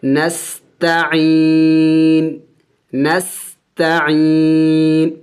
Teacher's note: وقف کریں گے تو وقف میں اس نون کو سائلنٹ کر دیں گے، یعنی ساکن کر دیں گے